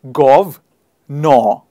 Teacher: we don't pronounce the r in the end